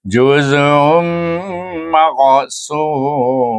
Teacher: Juz kemudian tanwin wa baris waw itu tanwin baris waw bertemu dengan mim dibaca dengan idgham ma'al gunnah juga dengan dengung dua harakat